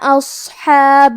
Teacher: کلمت اصحاب میں حرف الصاد کو موٹی آواز میں پڑھیں گے